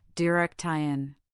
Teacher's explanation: The word direction has stress on the second syllable, direktion.